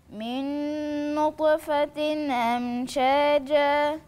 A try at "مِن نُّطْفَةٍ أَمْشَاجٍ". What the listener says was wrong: لو هتقف هتقف على ساكن، وبعدين هي مش منصوبة دي مكسورة، يبقى هقول ايه لو حقف؟ من نطفة أمشاج، لو حقف حوصلها الجيم عندي مكسورة ولا الجيم مفتوحة؟ ده تنوين مكسور.